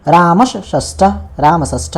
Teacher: ये देखो, ये दंत स है, दंत स मूर्धन्य श में बदल गया। क्यों? क्योंकि उसके सामने में मूर्धन्य श था। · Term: ष्टुत्व संधि